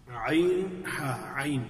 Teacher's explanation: وسط الحلق سے جو ہے وہ عین اور ہا، عین اور ہا، یہ دو حروف ادا ہو رہے ہیں وسط الحلق سے، حلق کے درمیان سے. عین ہا، عین، یہ عین کی ادائیگی ذرا تھوڑی سی مشکل ہوتی ہے ابتدائی طور پہ جو اس حرف کو ادا کرتے ہیں.